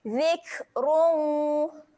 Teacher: huruf kaf yang mati sifatnya adalah keluar angin. Kena keluarkan angin.